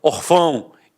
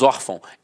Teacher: a sílaba tônica está na penúltima e é acentuada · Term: paroxitona